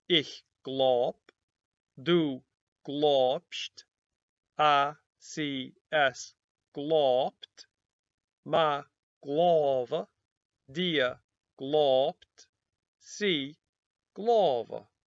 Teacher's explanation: The V sound that we see in the infinitive has changed to a B everywhere except before that ending E.